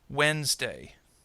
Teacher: Wednesday has only two the middle syllable kind of disappears